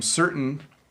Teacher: When I say certain, I don't say the T as much. And when I say mountain, you don't hear the T as much.